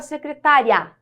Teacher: veja que na pronúncia esse I fica mais fraquinho que o a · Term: semivogal